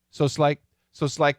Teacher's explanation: that s cancels out that t